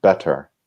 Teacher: in the more standard British English, the T's are pronounced very, very much like a T, better. And what we do in American English is it's still written the same, but we almost pronounce D's in the middle if you listen for it.